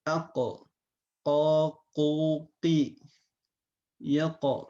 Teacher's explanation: jadi tidak ee keluar angin tapi dia memiliki sifat khusus yang namanya Qalqalah